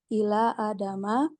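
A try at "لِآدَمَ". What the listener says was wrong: Li Adama, bukan Ila.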